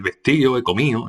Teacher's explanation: Relajación de sonoras interiores, la D intervocálica